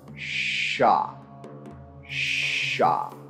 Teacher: the alveolar ridge and the front of the tongue domed at the palate without engaging the vocal cords